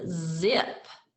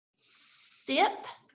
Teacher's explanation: the z sound has that buzzier feeling than the s sound